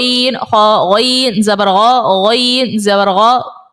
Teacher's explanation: غین اور خا جو ہے نا, یہ حلق کے سب سے اوپر والے حصے سے ادا ہوتا ہے